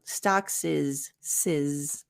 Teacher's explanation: stocks ends in an S and is ends in a z sound so then we link it